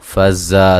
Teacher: زا کو سختی سے زور کی زا کی طرح اور اسی طرح سیٹی سے ادا کریں گے